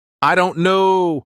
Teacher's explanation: upward tone like you're thinking